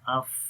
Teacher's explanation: فا کے اندر صفت حمز ہے، سانس جاری رہتا ہے اف. رخاوت آواز جاری رہتی ہے.